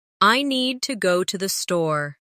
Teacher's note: Make need and store strong. And let to the be quick and light.